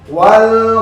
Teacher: লামের উপরে সাকিন, একটু দেরি গুণা গুণা ভাব